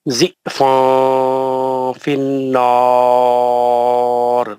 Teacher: آخری میں را پڑھتے وقت میں گول منہ کر دینا، کیونکہ را کو موٹا کرنا ہے نا